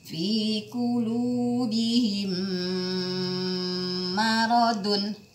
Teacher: kenapa karena ada mim sukun bertemu dengan mim yang berharap berharokat maka cara membacanya didengungkan dalam tempo dua sampai tiga harokat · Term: idgham mimi